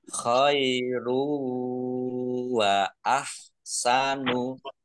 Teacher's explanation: Dhammah tanwin bertemu dengan huruf wawu bacaan idgham bi gunnah masuk dengan mendengung yaitu mendengung wawu. Ditandai wawunya ada tasdidnya.